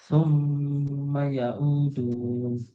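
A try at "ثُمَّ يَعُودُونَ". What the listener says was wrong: sudah benar panjang-panjengnya tinggal ain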